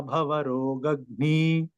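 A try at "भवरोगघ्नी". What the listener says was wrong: one small observation ಘ should be little more stress needs to be put for ರೋಗ್ನಿ ಘ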